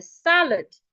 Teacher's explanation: the sa should be said louder longer and clearer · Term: stress the first syllable